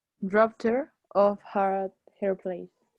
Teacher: Esa D se pronuncia T.